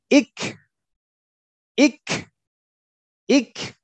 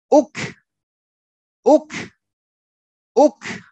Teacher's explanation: Ketika kaf sukun maka harus ada desisnya.